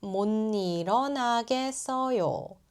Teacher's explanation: 못 becomes 몬 and 일 sounds like 닐.